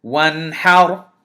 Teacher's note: Notice I didn't hide the noon. I presented the noon. I fully pronounced the noon,